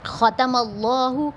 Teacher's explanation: اللہ کے نام سے پہلے اگر زبر آ جائے اس میں جلالہ سے پہلے تو اس کو ہم پور کر کے پڑھتے ہیں